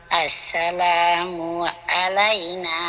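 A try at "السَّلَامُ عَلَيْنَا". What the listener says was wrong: এই আ বলে তো হামজা হয়ে গেল আলাইনা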